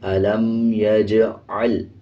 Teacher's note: عین کی آواز کو واضح پڑھنا ہے، عین کو لام کے ساتھ ملا کے پڑھیں گے